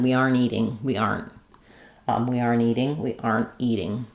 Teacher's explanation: if I'm going to a vowel next, I might drop the T and go right from the N.